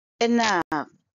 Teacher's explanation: it's a two syllable word and stress is on the second syllable